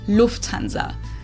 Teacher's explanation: So the emphasis is on the first syllable